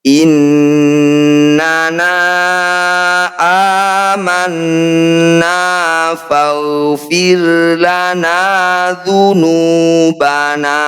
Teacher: Disebut bacaan gunnah musyaddadah. Cara bacanya bunyi nun, harus didengungkan atau ditahan 2 harokat.